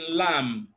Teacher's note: you can notice that where you have MB B is silent